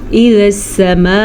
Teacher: سما میں جو مد ہے یہ 5 الف کے برابر، اس کو لمبا کرنا ہے اور خوب لمبا کرنا ہے۔